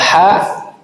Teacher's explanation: ada hembusan udara dikarenakan ada sifat hames dan rakha pada huruf ha yang menyebabkan hembusan udara pada pangkal tenggorokan atau katup pangkal tenggorokan.